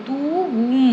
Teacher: இன்னிசை வர்றதுக்காக இந்த குறில் எழுத்தானது நெடில் மாதிரி வந்து அளபெடுத்து ஒலிக்கும் தூவும் அப்படின்றது து உம் அப்படின்னு இழுத்து சொல்லுவோம் இல்லைங்களா அதனால இதை இன்னிசை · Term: இன்னிசை அளபடை